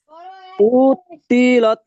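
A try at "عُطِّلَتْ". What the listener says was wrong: টান হবে না, উদ তিলাত, উদ তিলাত,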